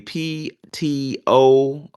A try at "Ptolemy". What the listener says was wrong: Ptolemy. I think the P is silent, or at least I always thought it was like supposed to be silent, and it's pronounced Ptolemy, but I could be wrong.